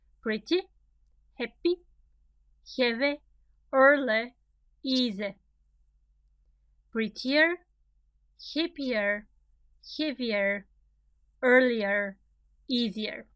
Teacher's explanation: You see where the stress is in all of these adjectives? On the first syllable.